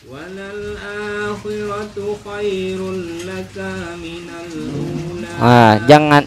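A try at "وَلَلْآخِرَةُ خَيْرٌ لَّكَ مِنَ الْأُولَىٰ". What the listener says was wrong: Jangan ada cengkok coba di kap yang keduanya. Langsung aja dilurusin. Walal akhiratu khairul laka minal ula.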